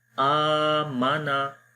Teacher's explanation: میں خالی آ کو لمبا کر رہا ہوں کیونکہ یہاں پر کھڑی زبر ہے اور کھڑی زبر کو ایک الف کے برابر لمبا کرتے ہیں۔ آ مانا، میم اور نون کو میں لمبا نہیں کر رہا۔